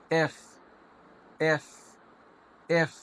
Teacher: উপরের ঠোট নিচের ঠোটে লাগবে না উপরের দুটো দাঁত নিচের ঠোটের সাথে লাগবে